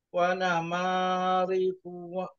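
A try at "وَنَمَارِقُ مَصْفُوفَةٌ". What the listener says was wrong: Riqu mas. Punya jangan dipanjangkan.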